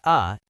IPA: ə